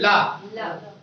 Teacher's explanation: बोले ला, तो लग रही कि जीभ अंदर की ओर, हवा जो अंदर की ओर खींच लो, हो रहा है। बोलो ला, जब आप ला कहते हो तो सांस अंदर की ओर ले रहे हो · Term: पार्श्विक